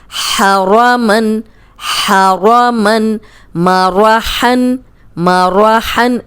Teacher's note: را کو دونوں جگہ آپ نے موٹا رکھنا ہے